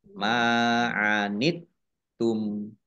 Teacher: Anit tum, taknya dibaca double, ada tasdidnya. Kemudian tumnya dibaca waqaf dan dibaca pendek, tidak ada tanda panjangnya